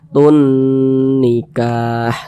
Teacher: Nah, tunnya itu kita tahan, kita panjangkan sejenak. Tun nikah, seperti itu. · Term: gunnah musyaddadah